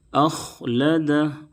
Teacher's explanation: خا کو ہمیشہ موٹا کر کے پڑھیں گے کیونکہ خا حروف مستعلیہ کے 7 حرفوں میں سے ہے۔ خا کی ادائیگی میں حلق سے کھڑکھڑاہٹ جیسی آواز نہ نکلے، بہت سے لوگ پڑھ دیتے ہیں اخلدہ، اس طرح سے نہیں پڑھنا ہے۔